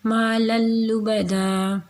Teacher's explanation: مدغم کر رہے ہیں، اور نیکسٹ ہے جی نون تنوین، تو یہاں پہ ہم نے لام کو لام میں مدغم کیا ہے